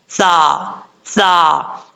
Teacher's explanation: कभी सीटी नहीं आएगी इसमें। अगर सीटी आ गई तो समझ लीजिएगा ये सीन पढ़ा जा रहा है, जो कि गलत है। सा सा इस तरीके से नॉर्मल तरीके से पढ़ा जाएगा। · बगैर सीटी के साथ पढ़ा जाता है। कभी सीटी नहीं आएगी इसमें। अगर सीटी आ गई तो समझ लीजिएगा ये सीन पढ़ा जा रहा है, जो कि गलत है।